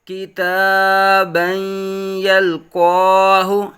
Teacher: تنوین کے بعد حروف یر ملعون میں سے یا آنے کی وجہ سے ادغام مع غنہ ہوگا، غنہ کے ساتھ ادغام ہوگا